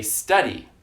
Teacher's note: we place the stress on the first syllable we don't place the stress on the second syllable study that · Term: stressed syllable